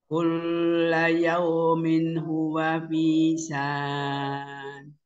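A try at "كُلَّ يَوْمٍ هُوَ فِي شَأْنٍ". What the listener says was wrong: Nah, di sini sya'an. Karena ada hamzah sukun jadi sya'an gitu aja. Dimentokkan. Sya'an. Sya'an. Nah, karena ada hamzah sukun jadi mentok dulu baru ada annya.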